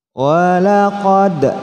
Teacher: dal huruf qalqalah dipantulkan.